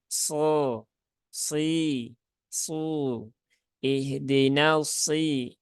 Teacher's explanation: Huruf shad itu dia punya sifat isti'la dan juga punya sifat idbaq. Sedangkan sin tidak ada.